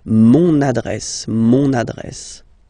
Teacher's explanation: you can hear now this little link, so you get to pronounce this N